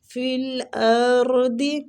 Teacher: را کو پر پڑھیں گے زبر کی وجہ سے